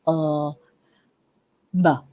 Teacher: B, very like P, but obviously B is more voiced.